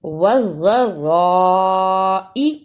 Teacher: دونوں شد کو صحیح ادا کرنا، بڑی مد کو ادا کرنا اور حمزہ کو جلدی پڑھنا